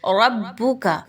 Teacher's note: ربک، را اور با آپس میں مضبوطی کے ساتھ ملائیں گے، با مشدد ہے اس لیے، را پر زبر ہے، را کو پر پڑھا جائے گا